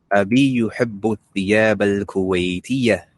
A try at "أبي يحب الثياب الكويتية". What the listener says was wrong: ليس كويتية. الكويتية. نعم.